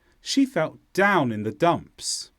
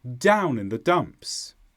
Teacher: Well, we stress down and dumps.